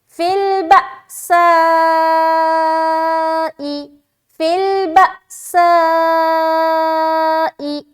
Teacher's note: با میں جھٹکا، سائی میں 3 سے 4 الف کھینچ رہے